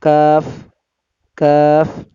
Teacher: 5 number মাখরাজ জিহ্বার গোড়া থেকে একটু আগে বাড়াইয়া তার বরাবর উপরের তালুর সঙ্গে লাগাইয়া মধ্যখান পেঁচানো কাফ